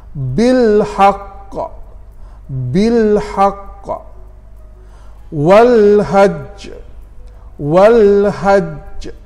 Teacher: oleh kerana kita berhenti bacaan qalqalah dibunyikan sedikit lambat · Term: qalqalah bertasydid